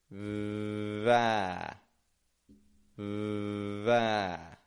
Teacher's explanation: Again, I'm not making it a V, V, but I'm holding that V out, not making a lot of pressure on the teeth.